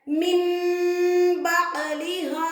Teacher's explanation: மூக்கல மறைச்சு ஓதணும் மீம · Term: இக்லாபுடைய சட்டம்